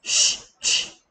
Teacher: 얘들 세 녀석의 공통점이 뭐냐면 쉬쉬쉬쉬 전부 다 목이 안 떨리지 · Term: 무성음